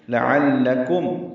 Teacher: لام باریک عین وسط حلق سے